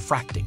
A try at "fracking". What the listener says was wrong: Fracking. no T.